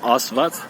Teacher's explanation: un A qui est un peu profond, pas un A ouvert comme en français, mais un A qui vient un peu des profondeurs